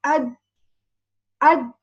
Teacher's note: When I say ad, the top side of the tip of the tongue touches the gum of the two upper incisors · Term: Del